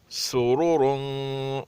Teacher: सीन सख्त और पतली, दोनों रा मोटी। रा पर अगर पेश और ज़बर हो तो मोटा पढ़ा जाता है, अगर रा पर ज़ेर हो तो उसको पतला पढ़ा जाएगा, क्योंकि यहाँ पे दोनों पर पेश है इसलिए मोटा पढ़ा जाएगा, और सीन को पतला पढ़ा जाएगा।